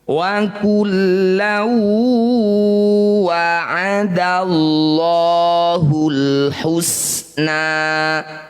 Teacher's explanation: Bunyi fathah tanwinnya masukkan pada huruf waw, dengungkan menyerupai ya. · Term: idgham bi gunnah